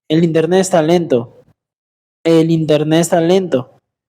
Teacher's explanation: You didn't pronounce the letter T, right?